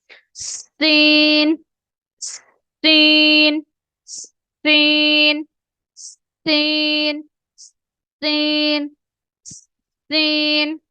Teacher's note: سین میں جو ہے سیٹی کی آواز لازمی آنی چاہیے